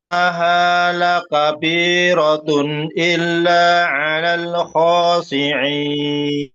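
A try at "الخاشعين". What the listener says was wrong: shi, jelaskan shi-nya. Khosyi'in.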